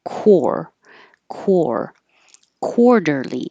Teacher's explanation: sound soon quarterly this q u is really a KW so round your lips while you're making your K the back of my tongue is making a k and my lips are rounded